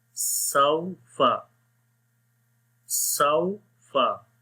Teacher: سین واو زبر سو، فا زبر فا، سو فا، سو فا، ٹھیک ہے، آخر میں ہونٹ گول ہو جائیں گے، واو ساکن ہے، اس سے پہلے زبر آ گئی تو یہاں پر واو لین ہوگا، دونوں چیزوں کا ہونا بہت ضروری ہے۔